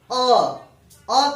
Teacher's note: जैसे हम कहते हैं अ कहते हैं, तो अ कहने से हवा बिल्कुल सीधे बाहर निकल जाती है बिना किसी भाग को स्पर्श किए हुए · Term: स्वर